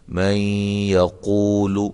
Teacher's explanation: نون ساکن کے بعد یا آ رہی ہے تو یہاں ادغام مع الغنہ ہوگا